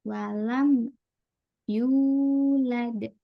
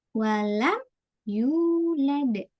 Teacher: Nah, kita tahan pokoknya ya. Walam langsung masuk ke huruf setelahnya. Walam yu. Nah, kalau kita nggak tahan, walam ya itu tadi agak mantul.